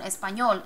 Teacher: emphasis is on the last syllable